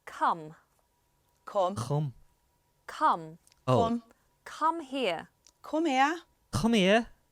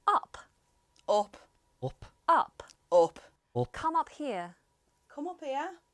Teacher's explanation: in standard british english we have ah but in scouse you have o